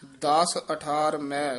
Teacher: ਦਾਸ ਪੋਲਾ ਹੀ ਬੋਲਣਾ ਹੈ ਮੈ ਨਾਸਕੀ ਨੀ ਉਚਾਰਨ ਕਰਨਾ